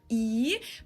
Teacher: e is pretty straight like you don't move your mouth here